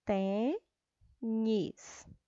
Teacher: a palavra tênis, a sílaba tônica, ou seja, a sílaba mais forte é o tem